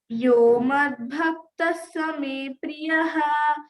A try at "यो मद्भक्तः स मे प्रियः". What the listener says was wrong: ఇంకా రావాలి స్ట్రెస్, ఇంకా రావాలి, ఇంకా స్ట్రెస్ రావాలి. యో మద్భక్తః మద్భక్తः స మే ప్రియః చెప్పురా.